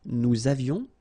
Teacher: little liaison, final S not pronounced